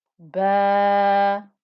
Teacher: That was ba with a fatha and an alif. That gave us a 2-count stretch.